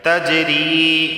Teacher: اور یہاں دیکھیں جیم آیا ہے اور جیم حروف قلقلہ میں سے ہے تو قلقلہ ہوگا، یعنی آواز مخرج سے ٹکرائے گی۔